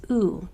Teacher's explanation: this U changes from its short sound to its long sound and says oo, because now there's a vowel in the next 1 or 2 taps.